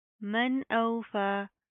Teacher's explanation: فا کے اوپر کھڑا زبر ہے، اس کو ایک الف کی لمٹ کے برابر کھینچ کر پڑھیں گے